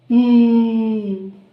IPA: m